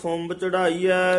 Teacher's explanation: ਖੁੰਬ ਕਸ ਕੇ ਬੋਲਣਾ ਇਹਨੂੰ ਖੁੰਭ ਨਹੀਂ ਕਹਿ ਦੇਣਾ